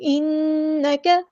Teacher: انک اذا لمن الظالمین، نون پہ غنہ زمانی ہو رہا ہے، ایک الف کے برابر یہاں پہ رکیں گے. انک، کاف کی زبر کو ہم لمبا نہیں کریں گے، کاف ہمارا لائٹ باریک لیٹر ہے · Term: باریک لائٹ لیٹر